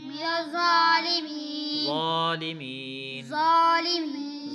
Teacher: زا پہ موٹا پڑھیں گے کھڑی زبر ہے لمبا کر کے پڑھیں گے